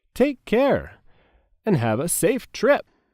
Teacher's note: And have a is said quickly together, and the words safe and trip are stressed.